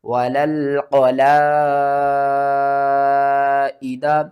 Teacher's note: مد متصل ہے، قرآن پاک میں یہ بڑی مد بھی کہلاتی ہے، اس کو آپ نے 5 الف کے برابر کھینچ کر پڑھنا ہے